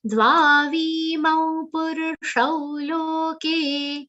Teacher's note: Here only V, Pu and Ru are short sounds. Only 3 short sounds. Rest everything is long.